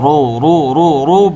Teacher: রয়ের মধ্যে পেশ থাকলে মোটা করে বলতে হবে